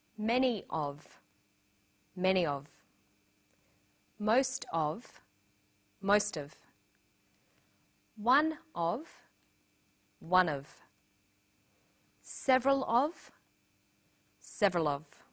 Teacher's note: notice that of in these phrases is unstressed